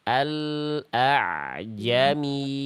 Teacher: Ain itu seharusnya dilafalkan harusnya suaranya itu sedikit mengalir. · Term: ain sukun